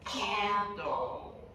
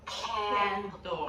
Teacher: The one at the end of a word is a dark L, and that has a dark sound we make with the back of the tongue, pressing down and back a little bit. So for this dark sound, you don't need your tongue tip.